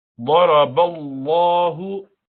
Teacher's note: ضاد with full mouth, را with full mouth. ضرب الله لام جلالة full mouth.